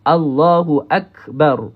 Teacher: Perhatikan huruf kaf ini dia tak ada tanda mati. Kalau kaf itu ada tanda mati, maka kita kena keluarkan hamas dia.